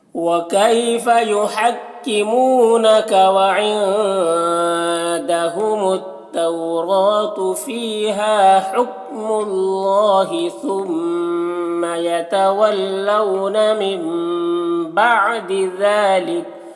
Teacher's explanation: ذال میں کھڑا زبر ہے، ایک الف کے برابر کھینچیں گے اور یہاں پر وقف کریں گے تو کاف کا زبر سکون سے بدل جائے گا